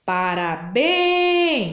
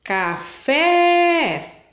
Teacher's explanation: Então elas têm acento a última sílaba é a mais forte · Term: sílaba tônica